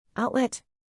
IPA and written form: ˈaʊt.lɛt (outlet)